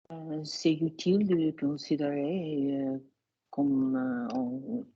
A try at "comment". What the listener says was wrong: Comment rather than com, but yes, comment, yeah.